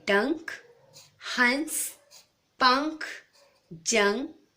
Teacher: इसमें जो ध्वनि आती है उसका उच्चारण नाक से होता है। अनुनासिक। अ के ऊपर चंद्र बिंदु। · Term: अनुस्वार